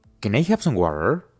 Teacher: aquí la t suena como una r suave porque se encuentra entre dos vocales la a de u a y la e de r por